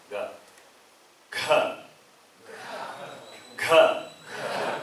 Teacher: Alpa Prana, right? I say Ga only. Ga. Less amount of air is expelled.